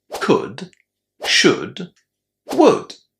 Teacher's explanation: And the letter O is also silent. So, we actually pronounce all three of these words without the O and without the L